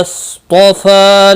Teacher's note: صاد مستعلیہ ہے، پر پڑا جائے گا۔ طا بھی مستعلیہ ہے، یہ بھی پر پڑا جائے گا۔